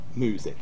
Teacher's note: there is y dropping after coronals and after M